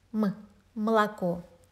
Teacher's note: The second О is reduced to almost А, sound like in under or after. And the third О is fully pronounced because it appears in the stressed syllable. · The first O is the farthest from the stressed syllable, so it's almost not pronounced at all. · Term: unstressed O, voice reduction